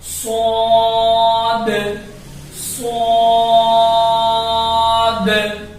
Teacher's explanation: آواز سیٹی کی طرح نکلے گی لیکن ہیوی آواز، ہیوی ساؤنڈ کے ساتھ نکلے گی